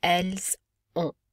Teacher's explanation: Il and elles ont. Notice we do not pronounce the T or the N. Instead, the N makes the O nasalized.